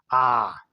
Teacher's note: आ ही एक शब्द है जिससे बोलेंगे तो हम लोगों का पूरा मुख खुला रहेगा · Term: विपरीत स्वर